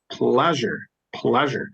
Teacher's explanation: I'm stressing on the first syllables